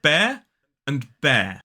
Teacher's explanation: Now, the first one is b-air, and the second one is b-air. Basically, they both start with the b, and then we move into that diphthong air, which is the same sound as the word air, the air that we breathe.